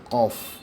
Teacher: জিহ্বার শেষ ভাগ তালুর সাথে লাগিয়ে উচ্চারণ হবে